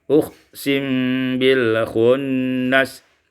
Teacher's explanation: disukunkan mim dengan ikhfa